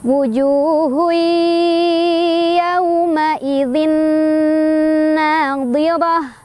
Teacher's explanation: Jadi masuk sambil berdengung ya, ditahan ya. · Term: idgham bigunnah